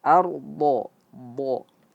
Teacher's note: bo itu merupakan huruf yang tebal juga, isti'la, yang dimana langit-langit lidah yang di belakang terangkat ke atas